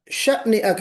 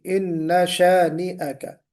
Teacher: یہ جو جھٹکا ہے شین کے بعد الف میں، یہ نہیں آنا چاہیے